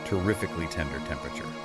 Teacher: You have to aspirate the te's so a little puff of air comes out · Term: aspirated teas, aspirated T's